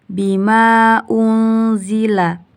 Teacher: hukumnya ikhfa hakiki karena nun sukun bertemu dengan za dibaca samar-samar